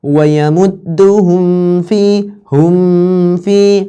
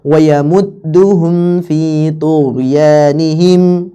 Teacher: Jelas kita bacanya tanpa guna.